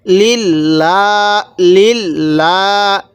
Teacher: উপরে জবর থাকতো তাহলে এই লামটাকে আমরা মোটা করে পড়তাম তো এই লামের পূর্বে একটি জের আছে এজন্য লামটা চিকন করে পড়ছি